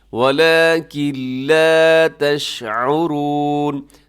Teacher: نون کی آواز نہیں آئے گی کیونکہ نون ساکن کے بعد لام ہے، تو یہاں بھی ادغام ہے لیکن بغیر غننے کے